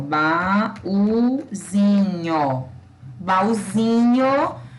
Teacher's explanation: na palavra baúzinho é o zin que é a sílaba tônica